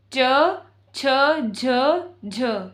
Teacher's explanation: स्पर्श संघर्षी व्यंजन। इसमें मुंह में स्पर्श भी हो रहा है और घर्षित होकर बाहर भी निकल रहे हैं वर्ण, तो इन्हें स्पर्श संघर्षी व्यंजन कहा जाता है।